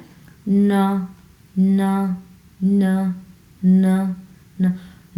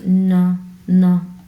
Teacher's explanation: আমরা একটু নাকের স্বরে ন ন এইভাবে উচ্চারণ করব